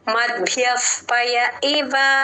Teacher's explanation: ప ముందు విసర్గ కాబట్టి ఎఫ్ సౌండ్ చేస్తున్నాం మద్భ్యఫ్ మద్భ్యఫ్ కొంచెం ద వినిపించాలి భ వత్తు వినిపించాలి య కూడా తర్వాత